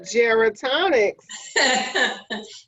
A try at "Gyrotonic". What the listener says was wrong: Gyrotonic, not gerotonic.